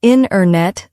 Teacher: The T sound gets softer or disappears. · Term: dropped sounds